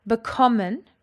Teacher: Bekommen has got its emphasis on the second syllable.